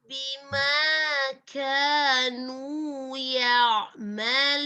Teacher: huruf kaf itu tipis ya. tidak tebal seperti huruf qaf. Dia memiliki sifat al-hamas, mengalirnya udara.